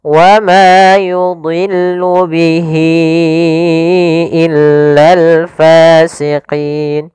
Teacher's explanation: pada lafal ma di sini ada mad tabi'i yaitu fathah bertemu alif, panjangnya 2 harakat.